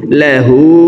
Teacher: হার উপরে উল্টা পেশ আছে, তাই ঠোঁট গোল করে এক আলিফ টেনে পড়ব। লাহু।